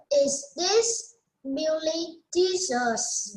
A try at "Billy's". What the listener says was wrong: Billy's. There's S. Billy's.